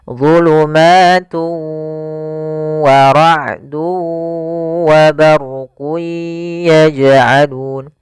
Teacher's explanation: cara membacanya tanwinnya dimasukkan ke huruf waw dan ditahan gunnahnya. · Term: idgham ma'al gunnah